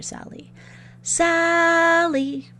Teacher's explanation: Sal part was the long part so that's the stressed part